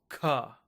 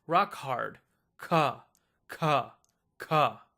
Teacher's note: If you put your hand in front of your mouth, you should feel a big puff of air.